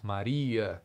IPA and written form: Mariə (Maria)